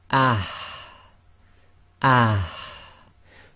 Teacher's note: the forceful ha where you push the air from the middle of the throat out of the front of the mouth